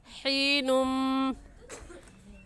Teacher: हा हलक के दरमियानी हिस्से से निकलेगा, निकाल कर पढ़ेंगे